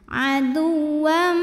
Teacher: Adu, wam, ada hukum idgham bi gunnah karena ada tanwin fathah yang menghadapi huruf mim. Maka tanwinnya masuk ke mim, adu, wam, dan bunyi M-nya tahan sampai ada suara masuk hidung.